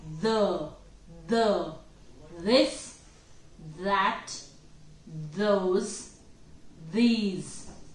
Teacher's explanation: your tongue is vibrating and there is a vibration in your vocal cords.